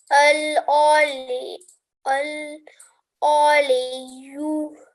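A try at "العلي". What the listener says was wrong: Just try this ain here. Try not to round it. I. Don't round your lips when you're reading it. Al-Aliyu.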